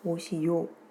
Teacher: 오시오를 오시요 이렇게 발음하는 것은 모음 변동에 해당합니다. 오 소리가 요 소리로 바뀌어 발음되기 때문입니다.